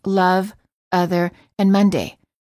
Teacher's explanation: it's the neutral sound uh as in love other and Monday which non-native speakers frequently mispronounce as love other and mande the